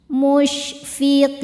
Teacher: Huruf yang disukunkannya nun. Maka qofnya ini panjang boleh dua atau empat atau enam harakat asal konsisten dalam sekali duduk. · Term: mad arid lisukun